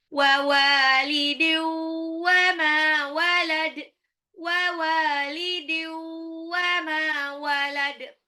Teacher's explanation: Mimnya 2 harokat mad tabi'i, dalnya lagi disukunkan. Qalqalah ya.